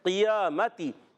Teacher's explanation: قاف موٹا کریں گے، زبان کی جڑ اور تالو کے نرم حصے سے قاف ادا کرتے ہیں